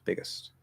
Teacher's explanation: So this this just has two options. If it comes out as ist or it comes out as ust, as long as it's super short and quiet, it doesn't matter.